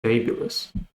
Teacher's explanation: The stress is on the first syllable. So fabulous.